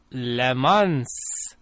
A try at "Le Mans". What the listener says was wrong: Except the S is silent. The S in Le Mans. It's a fancy French word.